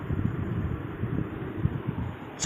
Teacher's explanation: चा जो है ये तालु से बोला जाता है · दांत के अंत भाग के ऊपर जो हल्का खुरदरा भाग है जिसे तालु के नाम से जाना जाता है, उसमें जीभ के स्पर्श से चा वर्ग का उच्चारण होता है